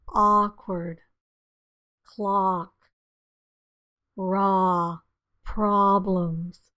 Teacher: it's a fairly low sound your tongue is fairly flat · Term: ah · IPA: /ɑ/